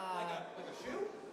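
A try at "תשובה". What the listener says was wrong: Not like a shoe. Teshuvah.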